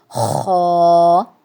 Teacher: زبان کی جڑ کو تالو کی طرف بلند کرتے ہوئے یہ موٹی آواز کے اندر ادا کرنا ہے